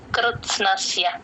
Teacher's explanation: కాకుండా అహం ఈ ప్రతి అక్షరం కూడా క్లియర్ గా వినపడేటట్టు పలకాలి. కృత్స్నస్య కృ తేల్చి చెప్పాలి త కి పొల్లు పెడతాం.